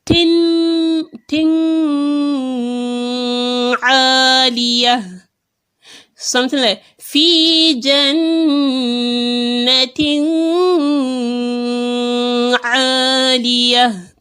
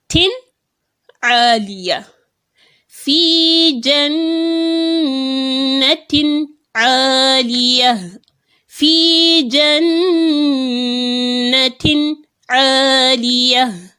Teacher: You see, I have separated them. I didn't make a gunna on them. I didn't join them. I made it obvious that this is separate from this. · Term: Izhar